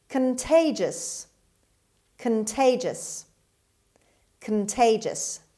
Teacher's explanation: The stress is on T sound, on T, second syllable. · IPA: /kənˈteɪdʒəs/